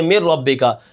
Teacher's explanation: یہ ادغام غنے کے بغیر ہے، یہاں پر نون کی آواز ختم ہو جائے گی